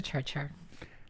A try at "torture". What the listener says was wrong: You don't say T. You don't say T words. Torture.